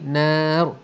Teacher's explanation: ra-nya tebal kerana ra itu kita matikan dan sebelumnya berbaris atas, maka bunyi dia ialah ra tafkhim, ra yang tebal